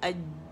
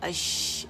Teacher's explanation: अगर आप इसको साकिन करें उससे पहले हमजा पे ज़बर, तो अश आवाज़ जारी, अश जीम में क्या हो गया था अज आवाज़ बंद हो गई थी, इसमें क्या है अश आवाज़ जारी है